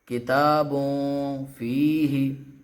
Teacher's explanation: ہم اس کو بھی ناک پہ زور دے کے پڑھیں گے، یعنی ناک سے آواز نکالیں گے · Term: اخفا